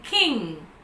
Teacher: it's a velar sound but it's a nasal